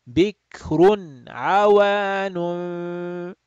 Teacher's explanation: So you have tanween followed by a throat letter, ayn. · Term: Idhar halaqi